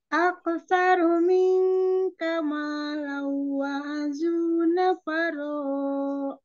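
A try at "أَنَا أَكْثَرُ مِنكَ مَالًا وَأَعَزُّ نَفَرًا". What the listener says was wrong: Jangan kepanjangan. Nafaro, mat iwat ya. Masih mantul. Ak. Kaf itu kan mahrodnya pangkal lidah bawah bertemu langit-langit keras ya.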